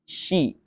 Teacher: Shin itu huruf istifal, tipis. Lidahnya turun. Lidah bagian belakangnya turun, ya. Shi, ya, lidah bagian belakangnya tuh turun, tipis.